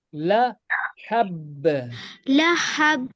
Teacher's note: ये बा जो है अभी साकिन बनेगा क्योंकि आपने स्टॉप किया इसके ऊपर सो ये कलकला मारेगा